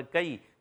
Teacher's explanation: یا ساکن سے پہلے زبر یالین ہے, نرمی سے ادا کریں گے